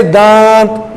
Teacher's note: اس میں نون پورے طور پر اپنی جگہ پر نہیں جاتا بلکہ مخرج سے تھوڑا سا ہٹ کر چھپ کر آتا ہے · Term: اخفا